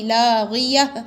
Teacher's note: لیکن گول تا جب بھی ہوگی ہا بنے گی